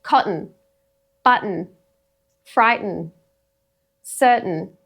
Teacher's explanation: So instead of a full vowel sound before the n, it just carries a syllable on its own. It's almost like a little schwa sneaks in, actually. · So it's not your tongue making the t. It's a really kind of brief catch in the throat here. You'll find that your tongue probably does lift up in an attempt to say the t, but it's just lifting for the n at the end because t and n, the tongue touches the same spot.